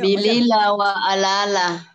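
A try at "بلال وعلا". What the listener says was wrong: kurang tepat cara bacanya. Bilila wa ala pakai ain, Pak. Pakai ain di sini nih. Wa alala.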